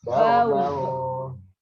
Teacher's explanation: Tanwin dengan wau masuk. Langsung masuk ke waunya ya. Ke waunya. Ini meskipun tidak ada tasdidnya, tapi harus masuk.